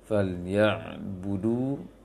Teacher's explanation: du panjang biasa, panjang 2 rakaat. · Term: mad biasa